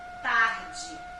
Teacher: O E no finalzinho tem som de I.